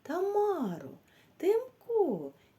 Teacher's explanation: коли ми вимовляємо цей звук т ми кінчиком язика стукаємо по горбикам над верхніми зубками